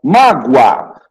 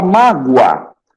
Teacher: O O tem som de U, então ele é uma semivogal